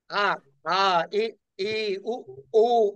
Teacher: వివృతము గొంతు బాగా తెరిచి పలికేది. ఆ ఆ ఈ ఈ ఊ మొత్తం గొంతుతో మొత్తం వస్తుంది.